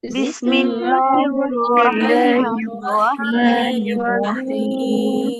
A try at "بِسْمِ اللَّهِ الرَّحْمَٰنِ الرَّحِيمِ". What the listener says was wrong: বিসমিল্লাহ লাম মোটা মোটা হবে না, তো পাতলা হবে। বিসমিল্লাহির রহমানির রহিম।